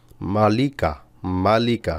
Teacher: এই তিনটা অক্ষরে কোথাও টান নাই